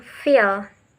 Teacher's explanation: The second example is labiodental. Labiodental contact between the lower lips and the upper teeth. The example is f as in feel.